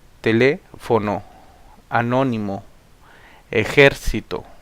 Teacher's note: llevan el acento en la antepenúltima sílaba